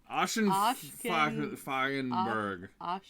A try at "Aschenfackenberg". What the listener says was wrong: No, yeah, you have too many syllables in there. we butcher that every time we said it. Oh, Ascherberg.